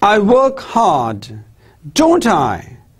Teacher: see my voice rises my tone rises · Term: questioning tone